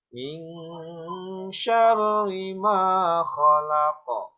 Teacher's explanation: Mingna ditahan, hukumna ikhfa